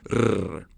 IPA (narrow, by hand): ɾ